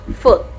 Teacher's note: the tongue is positioned close to the roof of the mouth, but not as high as the fully closed vowel like U. It is slightly lower. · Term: near high vowel